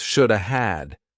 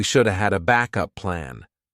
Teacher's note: Native speakers combine this to sound like we shoulda. Notice that the L is silent.